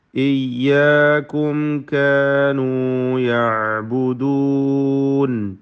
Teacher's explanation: ഇയ്യാക്കും സാക്കിന മീം ഇൽഹാർ ഷഫവി നൽകി മണിക്കാതെ വെളിവാക്കേണ്ടതാണ്